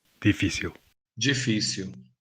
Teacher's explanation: you can hear the Brazilian G sound at the beginning, while in the European word it's D. You can also hear the Brazilian L as it's pronounced at the end of a word or syllable, like w.